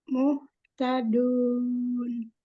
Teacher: mad ketemu dengan satu huruf yang disukunkan karena wakof. Maka disebut mad arif lisukun, dibaca 2, 4, sampai 6 harokat.